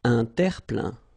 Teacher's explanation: Remember this E-I-N nasal, so it goes in your nose